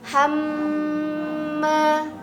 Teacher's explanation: Itu kalau nun bertasydid, mim bertasydid itu tahannya begitu lama. Hamma sampai masuk ke pangkal hidung. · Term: gunnah musyaddadah